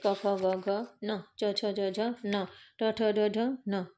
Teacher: हर वर्ग का जो पंचम अक्षर रहता है ना वो आपका क्या होता है, नासिक्य होता है